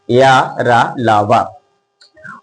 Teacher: इसलिए अंत अस्थ व्यंजन है क्योंकि जब हम इसकी उच्चारण करते हैं तो जीभ, तालु, ओठ, दांत स्पर्श होता है, लेकिन कहीं भी जो है वो पूरी तरह से स्पर्श नहीं हो पाता है।